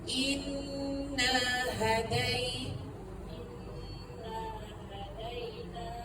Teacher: Dengung tu pastikan at least dua harakat. Ha na tu dua harakatlah.